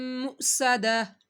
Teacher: حمزہ ساکن ہے تو حمزہ کو جھٹکے کے ساتھ پڑھنا ہے